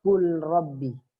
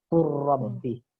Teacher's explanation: Kul Rabbi itu salah. Harus dimasukkan ke ro, seakan-akan lam tidak ada. Jadi dibacanya Rabbi. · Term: idgham mutaqaribain